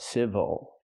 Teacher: the stress is on the first syllable so the second syllable is not stressed we cannot say ill we say oh